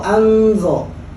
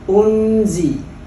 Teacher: bunyinya di nun, lidah kita sudah ke huruf berikutnya, maka akan berbeda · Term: ikhfa